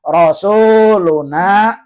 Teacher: Rasuluna panjang 2 harokat sebab ada apa? Waw mati sebelumnya baris domah, nama hukumnya mad tabi'i.